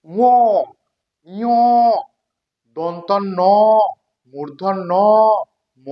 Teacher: নাসিক্য বর্ণ। নাসিক্য মানে এই বর্ণগুলো উচ্চারণ করতে আমরা নাক দিয়ে বাতাস প্রবাহিত করি